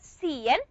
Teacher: the nasal na is affecting the articulation or the production of the vowel E. So the vowel E is going to be nasalized just like the nasal na. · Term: co-articulation effect